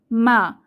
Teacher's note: মা বলার সময় আমাদের দুই ঠোঁটের শুকনা অংশ এক হয়ে যায় বা মিলে যায় মা এবং এতে কোন বাতাস বের হবে না এবং মা বলার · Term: মিম ফাথা